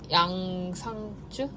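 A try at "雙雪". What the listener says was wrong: It's Shuangzi. So in Korean it will be Yang Shuangzi잖아요 in Korean, right? But it's actually Shuangzi.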